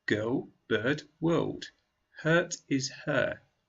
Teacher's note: It's quite long. We also need to use a little bit of R at the end. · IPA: /ɜ:/